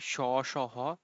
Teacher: যখন আমরা উচ্চারণ করি স, স, হ তখন মুখ দিয়ে একটু উষ্ম হাওয়া বের হয়, যার কারণে এগুলোকে বলা হয় উষ্ম ব্যঞ্জন